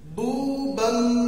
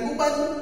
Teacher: kemudian nun ketemu dengan ba, maka dileburkan. Bubam, bukan buban.